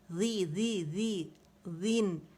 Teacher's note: اگر اس میں buzzing sound آئے گی پھر یہ زا کا مخرج ہوگا، ذال کا نہیں ہوگا